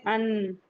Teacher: नून का मखरज चेक करना है तो हम कहेंगे अन तो हम देखेंगे कि हमारी टंग जाके ऊपर जो हमारे सनाए उलिया है उनके मसूड़े से टच हो गई। तो ये नून का मखरज है।